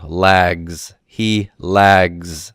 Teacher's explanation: Z sound lags he lags you hear that Z sound okay Z is a voiced sound which is to say that the vocal chords vibrate when you pronounce it